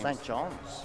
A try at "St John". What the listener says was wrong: St. John. No, not St. John's. Just St. John, no S.